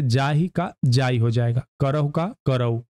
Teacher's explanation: इस बोली में मध्यम ह का लोप हो जाता है